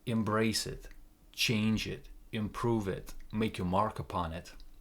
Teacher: every time he makes this statement, the intonation goes down